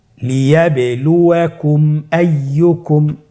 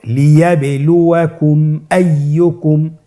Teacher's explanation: মিম সাকিনের পরে যদি মিম এবং বা ছাড়া বাকি যতগুলো হরফ আছে আরবি সবগুলো হরফের যে কোনো একটি হরফ আসলে মিম সাকিনকে গুণনা ছাড়া স্পষ্ট করে পড়তে হবে। মিম সাকিনকে স্পষ্ট করে গুণনা ছাড়া পড়তে হবে। আপনারা স্ক্রিনে দেখতে পাচ্ছেন হামজার উদাহরণ লিয়াবলুয়াকুম আইয়ুকুম। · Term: ইজহারে শাফাউই